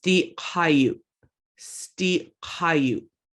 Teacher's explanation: And this glottal stop at the end, that's an abrupt stop to the whole word.